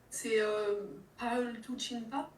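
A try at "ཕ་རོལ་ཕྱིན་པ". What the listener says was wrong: Yes, bravo, impeccable.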